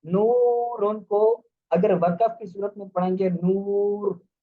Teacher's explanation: پر وقف بالروم کیا گیا تو را باریک ہوگی، اور نورن، نورن کو اگر وقف کی صورت میں پڑھیں گے نور، تو را کو کیا پڑھیں گے، پر پڑھیں گے ، کیونکہ را یہاں پر وقف بالروم کی صورت میں را